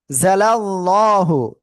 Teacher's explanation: আল্লাহ শব্দের লামের এক আলিফ টান আছে, তার ডাইনে জবর, মোটা আওয়াজে পড়বো